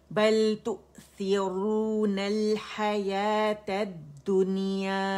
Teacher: حمزہ پہ جھٹکا، واو نہیں پڑھا جائے گا